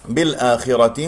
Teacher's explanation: بالآخرة هنا لدينا مد بدل مقدار حركتين، اكسر الباء جيدا. لدينا اللام القمرية لأنه جاء بعد حرف الهمزة.